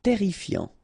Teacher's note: Double R here, so it will open the pronunciation of your E